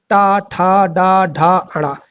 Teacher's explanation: दोस्तों आपका मूर्धन तीसरा वर्ग आता है और तीसरा वर्ग होता है आपका टा वर्ग। तो दोस्तों टा वर्ग के जितने भी व्यंजन हैं वो मूर्धन व्यंजन होंगे।